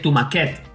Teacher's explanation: seria una paraula aguda i es pronunciaria tomaquet